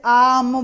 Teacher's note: ये जो हमारा आ होता है बड़ा आ, इसमें सबसे ज्यादा मुख खुलता है। कोई भी वर्ड बोलते हैं जैसे आम बोला तो सबसे ज्यादा इसमें मुख खुलता है, तो विव्रत स्वर में सबसे अधिक मुख खुलता है।